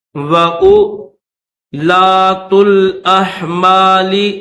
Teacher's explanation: حمزہ سے پہلا جو واو ہے اس واو کو تو پڑھیں گے، لیکن حمزہ کے بعد جو دوسرا واو ہے اس واو کو نہیں پڑھیں گے